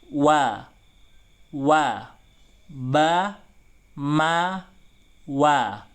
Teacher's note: Wa, dimajukan bibirnya ketika wa.